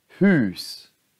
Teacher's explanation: Det är långt U och det är lång stavelse.